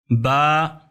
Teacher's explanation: با دو حرکت کے برابر اسے کھینچنا ہے، با بے نہیں پڑھنا۔